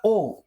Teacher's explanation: मित्रांनो आपला कंठ आहे आणि उ आपले ओष्ट्ये लक्षात घ्या बघा अ आपला कंठ आहे आणि उ आपले ओष्ठ आहेत मग यांच्यापासून तयार होतो आपला ओ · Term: कंठोष्ट्य